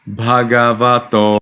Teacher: The to must be nicely longer than the previous vowels.